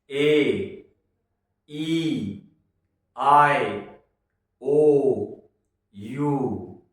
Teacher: 5 letter को बोलते समय होठ नहीं टकराए, गले में या मुंह में कहीं हवा को रोका नहीं गया, जो फेफड़ों से सीधी पैदा की वो बाहर निकाल दी। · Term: वॉवल